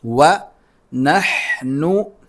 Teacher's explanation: ہا کو حلق سے نکالنا ہے